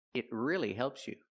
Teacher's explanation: We hear the pronunciation it. Use a stop T. Not it, but it.